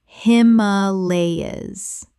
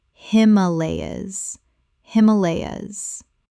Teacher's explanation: 4 syllables with the stress on the second.